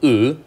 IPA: ɨ